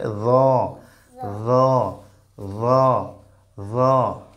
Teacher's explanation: জিহ্বার আগা সামনের দুই দাঁতের আগার সঙ্গে লাগিয়ে জ, নরম করে বলো